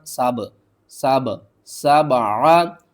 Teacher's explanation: با کے اوپر آپ نے قلقلہ کرنا ہے، با کو تھوڑا سا آپ نے ہلانا ہے